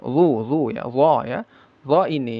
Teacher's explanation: D ya d makhrajnya ujung lidah yang menempel ke ujung gigi seri atas.